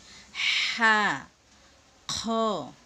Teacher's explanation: হা চিকুন হা বাতাস বের করে বলতে হবে